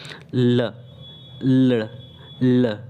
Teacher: जीभ का जो अग्रभाग होता है किससे, मसूड़ों को छूता है और साथ ही साथ दोनों पार्श्वों से जो हवा जो है निकलती है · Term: पार्श्विक व्यंजन